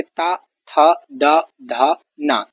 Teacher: जीभ दांतों से टकराती हुई इन वर्णों का उच्चारण करती है। इसे इसीलिए इसे दंत वर्ण कहा जाता है।